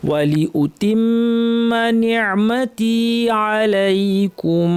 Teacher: আইন কণ্ঠনালীর মাঝখান থেকে শ্বাসনালীর পর্দাকে চাপ দিয়ে সুন্দর করে সুন্দর করে বলতে হবে